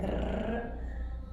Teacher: It's not quite the same R as in Spanish where it's really rolled like rrr, and it's also not pronounced as in English at all.